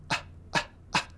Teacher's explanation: It's the one for which you use your vocal cords by doing ah, ah, ah. That is a sound which is not made in your mouth, therefore, but somewhere down in your throat.